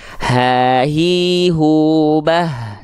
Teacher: secara teorinya hak besar bukan dilafalkan dari dada gitu ya tapi dari pangkal tenggorokan